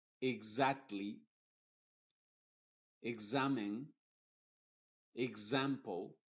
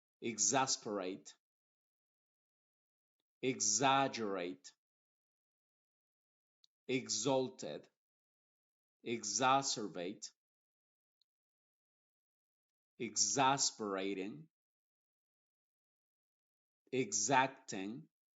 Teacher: la x modificada se pronuncia como una G y una Z inglesa · primero se pronuncia la G ig y luego Za